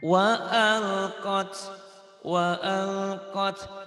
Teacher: lamnya idhar. Jangan ditahan, dilepas.